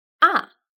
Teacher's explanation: The fourth tone is ah, like an angry command.